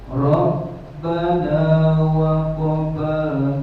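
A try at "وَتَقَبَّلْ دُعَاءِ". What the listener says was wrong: Bukan waqoba, wa taqabbal. Ada taknya.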